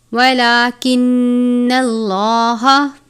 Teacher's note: لام کے اوپر کھڑی زبر ہے، ایک الف کے جتنا پڑھیں گے، نون مشدد، میم مشدد اور تنوین یعنی 2 زبر 2 زیر 2 پیش پر ہمیشہ غنہ کرتے ہیں، تو یہاں پر نون مشدد ہے۔